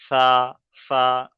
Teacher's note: ধরেন এখানে এই যে যদি আমি বলি যে সার মাখরাজ কি সার মাখরাজ হলো জীভের আগা আর উপরের দাঁতের আগার সাথে মিলিয়ে